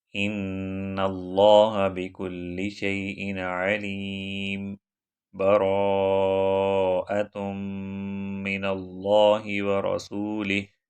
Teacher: سورۃ الانفال کا آخری ورڈ علیم، میم 2 پیش، اس کو ساکن کے اندر چینج کیا جائے اور وہاں پر تھوڑا سا ٹھہر کر نیکسٹ سورہ سٹارٹ کی جائے، لیکن اس ٹھہرنے میں سانس کو نہ توڑا جائے، سانس جاری رکھا جائے، جیسے ان اللہ بکل شیء علیم براءۃ من اللہ ورسولہ۔